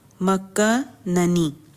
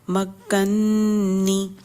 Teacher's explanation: پہلا نون مدغم ہے، دوسرا نون مدغم فیہ ہے، تو پہلے نون کو ساکن کیا، دوسرے میں اس کو ملا کے داخل کر کے پڑھا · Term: ادغام